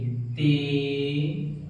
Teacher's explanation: ते, इसको हम सख्त पढ़ेंगे, सख्त और बारीक करके पढ़ेंगे ते। हिंदी में आप त कह सकते हैं, टे, ट भी कह सकते हैं।